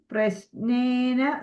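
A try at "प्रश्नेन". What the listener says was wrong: Prashnena, sh. Because S there is slanting line, no, Mataji.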